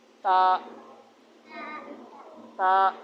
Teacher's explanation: دونوں سامنے والے اوپر والے دانت. اس کے اندر مسوڑے جو جڑے ہوئے ہیں نا، وہاں پہ دانت جو جڑ ہے دانتوں کی، وہاں پہ زبان کی نوک لگانی ہے